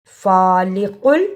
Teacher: کاف اور قاف دونوں کی آواز میں فرق ہے، قاف کو موٹا پڑھا جاتا ہے۔